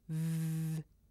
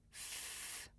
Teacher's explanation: When I make a voiced sound, like v, my throat vibrates. But when I make a voiceless sound, like f, it's just air coming through my mouth. Now, you can also hear if you put your hands over your ears like this.